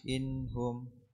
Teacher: نون ساكنة مظهرة قبل الهاء مضمومة